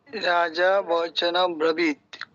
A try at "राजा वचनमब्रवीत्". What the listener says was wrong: বচনম, বচনম ব্রবীত। হ্যাঁ, আপনি ওই সন্ধিটা প্লিজ ভাঙবেন না, আপনি আমার গত ক্লাসের বাড়ির কাজেও সন্ধি ভেঙেছেন, সন্ধি ভাঙবেন না। একটা কাজ করুন, আপনি সুর ছাড়া আগে উচ্চারণগুলো ঠিক করুন, তারপর আপনি যেই সুর খুশি সেই সুর প্রয়োগ করুন, ঠিক আছে?